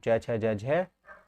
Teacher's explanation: ताल में पूरा का पूरा च वर्ग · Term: तालव्य